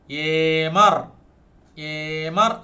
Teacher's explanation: ഈ short എ long ആയിട്ട് നമ്മൾ ഉച്ചരിക്കുന്നു.